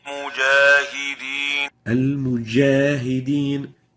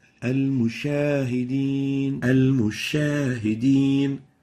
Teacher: Now the third mistake is mixing the sound of the jim with the sound of the sheen